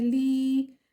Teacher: یا مدہ کو ہم حرکتین مقدار دیر لگا کر کھینچتے ہیں، مطلب 2 سیکنڈ کھینچتے ہیں